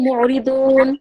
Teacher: এখানে মাদ্দে আরজি হবে, তাই এখানে 3 আলিফ টান দিয়ে ছাড়তে হবে